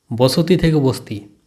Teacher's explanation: মাঝখানে ছিল অসর ধ্বনি এই স্বরধ্বনিটি লোপে পরিণত হয়েছে যুক্ত ব্যঞ্জনে অস্বরধ্বনি লুপ্ত হয়ে দন্ত স এবং ত যুক্ত ব্যঞ্জনে পরিণত হয়েছে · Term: সম্প্রকর্ষ